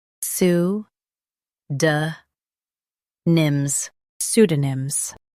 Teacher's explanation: Emphasize su and keep duh soft. The P is silent.